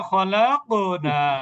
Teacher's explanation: শব্দের মাঝখানে কফে কলকলা